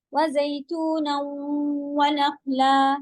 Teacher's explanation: وزیتونا ونخلا ادغام ناقص ہے، وہاں پہ کوئی نشان نہیں لگا ہے، پھر بھی آپ مرج کریں گی کیونکہ اس سے پہلے تنوین ہے، اور ناقص مرج کریں گی یعنی نون غنہ کی آواز باقی رکھیں گی. نخلا خو ہیوی، نا اور لا سیدھا.